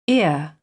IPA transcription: ɪə